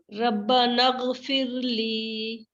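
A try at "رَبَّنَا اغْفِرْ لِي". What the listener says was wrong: نغ مطلب کلکلا نہیں کرنا غائن پہ، نغ کہہ کے آپ نے ایک دم خاموش ہونا ہے. ربنا اغفر لی، نغ، اس کو آپ نے پریکٹس کرنی کہ نغ نہ ہو اور پھر کلکلا آ رہا ہے آپ کا.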